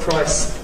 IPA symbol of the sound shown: aɪ